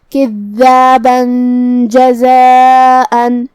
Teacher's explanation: ہم یہ تنوین کو چھپاتے ہوئے لیکن غنہ کے ساتھ یہ حکم کو ادا کریں گے